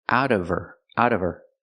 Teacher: the H in her is silent because it's not a stressed word.